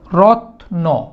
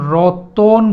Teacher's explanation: এই রত্নকে আমরা যখন রতন বলছি তখন দেখেন শব্দের মধ্যে একটা অধ্বনির আগমন ঘটিয়েছি। এই যে শব্দের মধ্যে একটা অধ্বনির আগমন ঘটিয়েছি, এই জন্য একে আমরা বলবো মধ্য স্বরাগম।